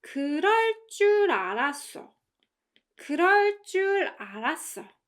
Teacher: And as you can hear, the 알았어 part suddenly weakens, right?